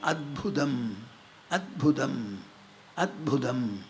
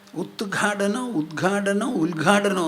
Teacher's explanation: ഒരു ഖരാക്ഷരത്തിന്റെ തൊട്ടുപിന്നാലെ ഒരു മൃദു അക്ഷരം വന്നാൽ ആ ഖരം മൃദുവായി തീരും